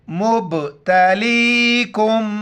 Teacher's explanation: میم ساکن ہے یہاں پر ناک میں آواز چھپائیں گے